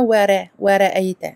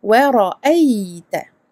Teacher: On amincit le waw, on grossit le ra ici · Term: On l'emphatise